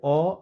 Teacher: अ और आ यह दोनों ही कंठ से उच्चारित होने वाले वर्ण है